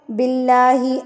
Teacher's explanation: اللہ سے پہلے جب زیر آتی ہے تو اللہ کا لفظ باریک پڑا جاتا ہے